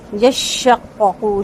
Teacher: یشقق شین کا تفشی یعنی کہ شین کا شور واضح ہوگا، قوف کو اچھے سے پر کریں گے اور قوف کے تشدید کو واضح کرنا ہے ، اس کو یشققو یا یشققو نہیں پڑھنا، یشققو یشققو شین